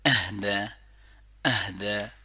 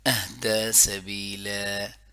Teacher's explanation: اہدى سبیلا, ہاں ٹھیک ہے, گلے کے نچلے حصے سے, حمزہ اور ہا جو ہے آ اور ہا یہ گلے کے نچلے حصے سے